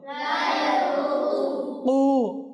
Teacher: কফের মাখরাজ কি? জিহ্বার গোড়া তালুর নরম অংশ থেকে উচ্চারিত হয়।